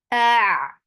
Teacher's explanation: Attach it to Ain. Ain will get sifa of tawassut, and Ain should be from your throat.